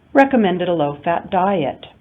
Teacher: we're going to signal that we're not finished by using rising intonation and then at the end of the sentence we signal that we're finished by using rising falling intonation